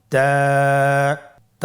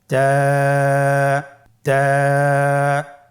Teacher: জিহ্বার আগা সামনের উপরের 2 দাঁতের গোড়ার সঙ্গে লাগিয়ে উচ্চারিত হয়।